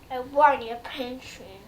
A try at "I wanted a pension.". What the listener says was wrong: No, you're not saying it. You're kind of trailing off. Say, I wanted a pension.